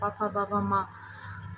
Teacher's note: इसका उच्चारण स्थान वैसे तो ओष्ठ होता है